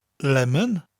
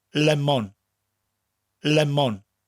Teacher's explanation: You distinctly hear the two separate syllables, and they're said evenly.